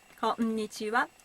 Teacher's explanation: each syllables should be spoken for the same length of time